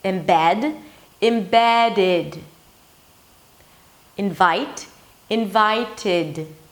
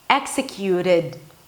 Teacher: when the ed suffix appears after a T or a D, that's the only time we add a vowel, and that's the E sound or just a schwa. If you speak really fast, embedded, invited.